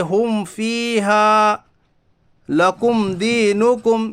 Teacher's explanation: میں ایک بار پھر رپیٹ کرتا ہوں، میم ساکن کے بعد با اور میم کے علاوہ کوئی بھی حرف آئے تو اظہار شفوی ہوگا، یعنی میم ساکن کی آواز کو ظاہر کر کے بغیر غنہ کے جلد پڑھی